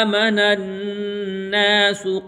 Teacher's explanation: جب نون کے اوپر تشدید آئے گی تو اس کی آواز ہم ناک میں لے جائیں گے اور اس کو گننہ کہتے ہیں۔